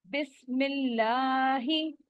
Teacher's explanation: बिस्मिल्लाही, यहाँ पे लामे जलाला यानी अल्लाह का लाम बारीक होगा।